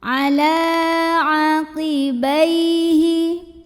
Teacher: lam ini dipanjangkan 2 harokat saja